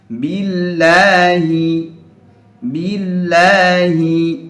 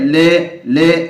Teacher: apa bedanya adalah ketika sebelumnya adalah huruf yang berharakat kasrah kasrah maka lam pada lafal jalalah ini dibaca tarqiq atau tipis artinya tidak ada suara yang memenuhi mulut atau tidak ada suara o tapi suara ya lam aslinya contohnya